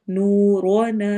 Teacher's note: لنا، الف مدہ کرنا ہے، یعنی کہ کھڑی زبر کی طرح لمبا۔ نورنا، نو میں واو مدہ ہوگی، دو حرکہ لمبا، روا کو موٹا پڑھنا ہے